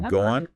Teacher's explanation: a tiny little W or Y sound gets inserted between two vowel sounds just to smooth the transition. >> A little bridge sound. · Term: intrusion